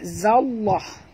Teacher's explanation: Lam yang pertama mati, lam yang kedua adalah baris di atas dan hendaklah dibaca tebal kerana ini dinamakan lam lafaz jalalah, kerana huruf zal ini berbaris di atas.